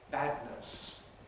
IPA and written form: ˈbædnəs (badness)